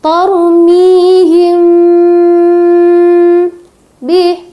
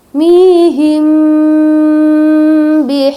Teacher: Ikhfa Syafawi apabila mim mati bertemu dengan huruf ba maka dibaca dengung ya atau samar